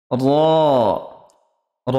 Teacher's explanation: জিভের আগার উল্টো পিঠ ও তার বরাবর উপরের তালুর সাথে লাগিয়ে উচ্চারিত হয় এক আলিফ জিহবাকে উল্টে দিতে হবে জিহ্বাটা যেভাবে সোজা আছে সোজা · জিহবাকে উল্টে দিতে হবে জিহ্বাটা যেভাবে সোজা আছে সোজা না থেকে উপর দিকে উঠে জিহবার নিচ দিকটা তালুতে ঠেকবে